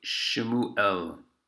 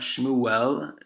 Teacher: it's because of the aleph it makes a glottal stop